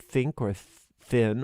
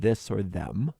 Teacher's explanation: So it's unvoiced, like think, or thin, or voiced, like this or them. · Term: voiced TH